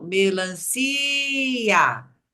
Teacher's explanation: nós temos aí duas vogais porque as duas são fortes tanto o i quanto o a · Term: iato